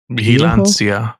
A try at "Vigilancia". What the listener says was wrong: It's not B. It's V. But it's not B. It is B. Vigilancia. Lancia. Vigilancia.